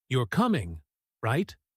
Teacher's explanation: With rising intonation on, Right, they're checking information and expecting an answer.